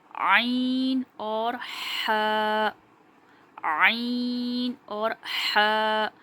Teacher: ये हलक के दरमियानी वाले हिस्से से यानी कि बीच वाले हिस्से से अदा होगा